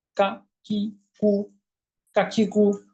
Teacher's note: এরপর হলো কাফ। জিহ্বার গোড়াটা একটু সামনে বাড়িয়ে তালুর সঙ্গে লাগিয়ে। কিভাবে? পাতলা করে